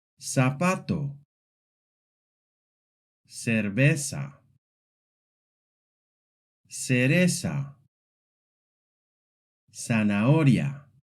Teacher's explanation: any word with a Z sounds exactly the same as if it had an S.